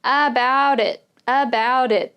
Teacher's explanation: this t is kind of changing to a d